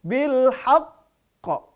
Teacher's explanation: karena qalqalah huruf qafnya bertasydid, ditahan dulu.